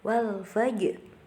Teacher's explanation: Kemudian ada qalqalah sughra di situ karena terdapat huruf qalqalah jim yang sukunya itu asli. Jadi dibacanya memantul.